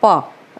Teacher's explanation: ओठ हमारे चिपक गए है